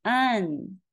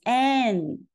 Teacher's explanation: The Chinese an is [a] so it's [an], the American an is [æ], it's [æn].